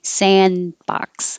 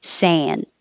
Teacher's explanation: the d unless it's connected to a vowel the sand is if there's a consonant after it you won't hear the d